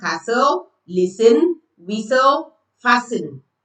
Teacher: So you see that we don't use, we don't say castle, listen, whis, whistle, fasten. No, the T is silent. You don't pronounce the T. So it becomes castle, listen, whistle, fasten. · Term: Silent T, silent T